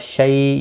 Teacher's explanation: شی یا لین ہے تھوڑا نرمی کے ساتھ کھینچ کر ادا کریں گے